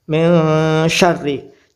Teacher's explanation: nun mati bertemu syin maka membaca samar tengah-tengah antara Nun dan syin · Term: ikhfa Hakiki